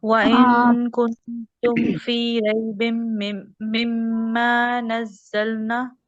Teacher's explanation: دونوں میم کے اوپر غنہ ہوگا، غنہ کے بعد الف کو ہم نے ڈراپ نہیں کرنا، الف کو پڑھنا ہوگا